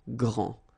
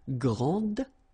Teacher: And regarding the feminine form, you will pronounce it grande. Okay, don't insist on the final E, but then pronounce this D, grande, and then exactly the same pronunciation, grande.